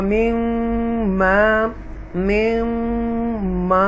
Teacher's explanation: इदगाम शफ़वी है यहाँ पर, यानी कि डबल मीम आ जाती है